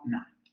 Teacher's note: Todas las nasales son sonoras. Articulamos en los alvéolos, el aire sale por la nariz y las cuerdas vocales van a vibrar.